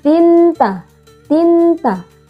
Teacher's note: kasrah tanwin bertemu dengan huruf ta dibacanya samar dan berdengung